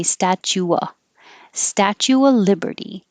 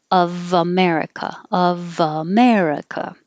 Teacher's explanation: the F is really a V, but you don't have to pronounce it at all if it's before a consonant, in this case the L.